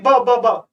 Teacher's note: ब बोल के देखिए, ब ब ब दोनों ओष्ठों का प्रयोग हो रहा है, तो द्वय ओष्ठ बोलेंगे।